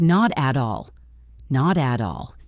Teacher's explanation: the T in not flaps. The T in at flaps. So it sounds like not at all.